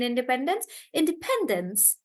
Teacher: so the stress is on pen in Independence